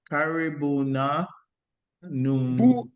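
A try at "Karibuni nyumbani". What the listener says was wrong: Can you go slowly? Karibuni, not na. Nyumbani.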